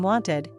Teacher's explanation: in wanted, you can clearly hear the ID sound as a separate syllable. But in called or liked, the ending blends into the word and doesn't sound like call-ed or like-ed.